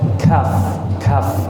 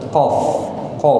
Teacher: Nah kalau Kaf itu dia lebih ringan daripada Q karena di depan